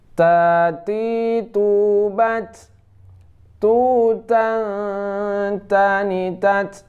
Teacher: Ta ini huruf hamas. Nah, dia keluar angin.